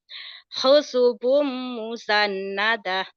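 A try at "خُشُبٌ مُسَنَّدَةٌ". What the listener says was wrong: Kho-nya belum keluar ya. Khusyubam. Khusyubam musannada.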